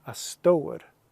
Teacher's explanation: there's kind of this W sound here in the version I learned, the dialect I learned